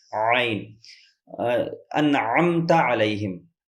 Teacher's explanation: عین حلق کے بیچ حصے سے ادا ہوتا ہے۔ اس سے پہلے سبق میں آپ کو بتایا جا چکا ہے، ہمارے حلق کے 3 حصے ہوتے ہیں۔